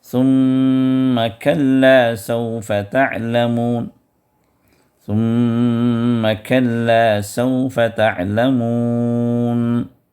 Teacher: ثم کے اندر یہاں پر میم مشددہ ہے تو یہاں پر بھی آپ کو ادغام مع الغنہ کرنا ہوگا